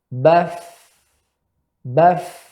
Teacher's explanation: samar ya dalam pengucapan akibat terbukanya pita suara. Kaidah yang kedua, tidak bergetarnya tenggorokan ya pada pengucapan huruf hamsun.